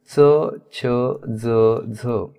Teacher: च, छ, ज यांचा उच्चार करत असताना ते दंत तालव्य म्हणजे दात आणि टाळू यांना प्रभावित करतात, म्हणून यांना दंत तालव्य वर्ण असं म्हटलेलं आहे.